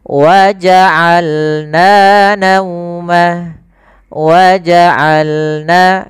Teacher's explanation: Dari tengah tenggorokan kita lafalkan ain.